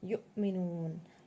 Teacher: حمزہ ساکنہ کے پڑھنے میں جھٹکا ہوتا ہے, یو میں تھوڑا سا جھٹکا دے رہے ہیں. می کو جلد پڑھ رہے ہیں.